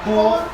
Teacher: in who, the first part of the vowel who has no voice. It consists of breath flowing through the mouth, which is in position for you.